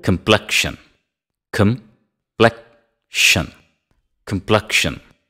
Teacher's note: the second syllable receives the stress